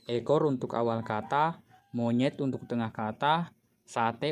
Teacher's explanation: Fonem E memiliki 2 alofon, yaitu E tengah atas tak bundar depan dan E tengah bawah tak bundar depan dengan grafem E.